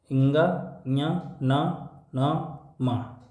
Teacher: ये मुख और नासिका दोनों से बोले जाते हैं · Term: अनुनासिका